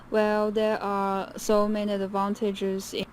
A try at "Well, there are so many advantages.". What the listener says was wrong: her rhythm is really off she's frowning syllable by syllable by syllable nothing is connected there's no intonation there's no stress